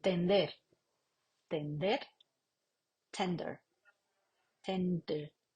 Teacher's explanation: la lengua no está contra los dientes sino que está en la zona posterior de los dientes que serían los alveolos